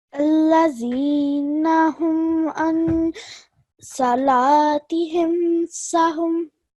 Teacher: when we join the ayn to the noon, we have to do so with a 2-second nasal sound · You do not produce a nasal sound for these memes. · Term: clear pronunciation meme sakin